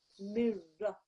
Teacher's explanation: This meme with the kasra, followed by a noon sakin and a ra mushaddad, is part of your idgham lesson, okay? And it means that the meme and the ra join, the noon disappears.